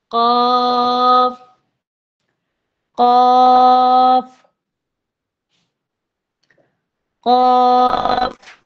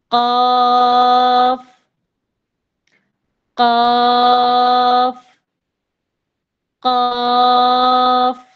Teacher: اس قاف کو ہم نے موٹا بھی پڑھنا ہے، کیونکہ یہ مفخم ہے، اس کو پر بھی پڑھا جاتا ہے، اس لیے ہم منہ بھر کر پڑھتے ہیں